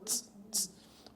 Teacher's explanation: será transcrita fonemicamente como um segmento africado alveolar